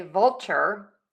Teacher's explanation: You can also say vulture, where your tongue gets kind of close for that L, but doesn't touch the whole way. That's a dark L.